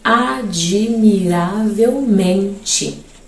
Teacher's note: Ele diz que em admiravelmente, o men é a sílaba tônica, logo é uma paroxítona.